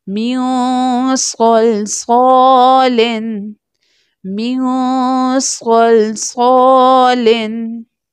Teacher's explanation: صاد جو کہ تھک لیٹر بھی ہے مستعلیہ لیٹر بھی ہے اس لیے اس کو تھکر ٹون میں بھی پروناؤنس کریں گے